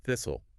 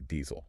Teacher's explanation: The only difference is the vowel. Short I in thistle, long E in diesel.